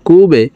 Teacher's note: বা কলকলার হরফ নিচের দিকে ধাবিত করে ধাক্কা দিয়ে উচ্চারণ করবো কুবে র খারা জবর র [সশব্দ